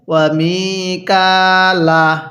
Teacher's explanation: মি এর মধ্যে টান দিব কাফের মধ্যেও টান দিব